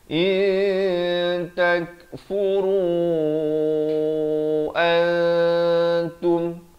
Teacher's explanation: Di sini ikhfa hakiki, disamarkan. Jangan baca in, asalnya memang in, tapi datang ta disamarkan, ikhfa dua harakat.